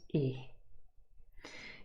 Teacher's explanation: have e a little bit further up to the left and e is also called a near close front unrounded vowel sound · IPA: /ɪ/